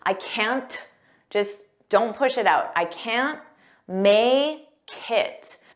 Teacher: Notice we don't push out that T.